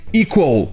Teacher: Ici, le U se prononce W, comme un W.